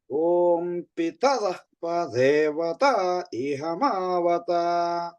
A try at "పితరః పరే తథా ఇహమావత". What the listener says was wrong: వత లేదు, వకారం లేదు. పితరః పరే తథా ఇహమావత.